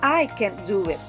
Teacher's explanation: the emphasis is on i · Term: sentence stress